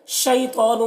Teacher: یہاں پر یا لین ہے، اسے نرم آواز کے ساتھ جلد پڑھنا ہے